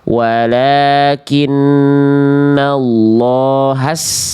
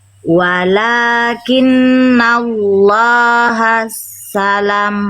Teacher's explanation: Sinnya nggak ada tasydid. lah Jadi yang ditekan yaitu lamnya. Sinnya biasa aja.